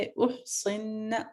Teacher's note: ذات اخدان، اخدان، فاذا 4 حرکت آپ کا مد ہے، احصن، صاد پھر بھی آپ کا ہیوی رہے گا، باریک نہیں پڑھا جائے گا اسے